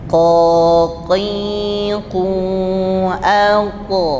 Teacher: Q itu dengan Kaf tertukar kerena kurang naik ya suaranya kurang naik ke langit-langit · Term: qof